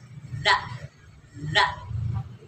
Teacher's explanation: Jadi ujung lidah dengan ujung gigi depan atas.